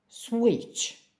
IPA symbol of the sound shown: tʃ